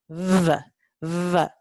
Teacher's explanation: Tienen que vibrar las cuerdas vocales para pronunciar este alófono V. Este alófono ocurre solo al final de la sílaba o de una sílaba cuando está delante de una consonante sonora. · Tenemos también un alófono infiel para este fonema labiodental fricativo sordo, y el alófono fiel aquí es labiodental, es fricativo, pero es sonoro